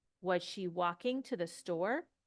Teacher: the intonation goes up